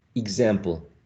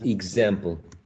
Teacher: That is definitely a weird one because it's not only that you change the k for g, also the s for z, so it totally changed